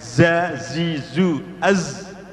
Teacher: Kemudian 13, ujung lidah menghadap dan mendekat kepada di antara gigi depan, atas dan bawah. Jadi ujung lidah tidak nempel tapi mendekat, ya. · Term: sofir